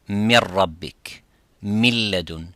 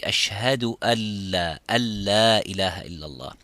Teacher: the noon sakina or tanween, soon as it comes next to the ra or next to the lam, the noon becomes, or the tanween becomes silent